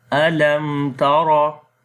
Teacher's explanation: Ra we read in heavy sound due to fatha sign on it. · in izhar shafawi we make the clear sound of mim, and then we say alam tara.